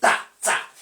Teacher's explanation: There is a sudden release of air. There is a puff release of air. There is a puff outburst of air. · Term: voiceless alveolar plosive